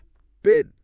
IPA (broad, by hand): ɪ